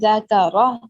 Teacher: یہاں پہ ذکرہ، ذا کاف را، را موٹا پڑا جائے گا. ذکرہ، ذا اور کاف پہ حرکت ہے، اس کو لمبا نہیں کریں گے.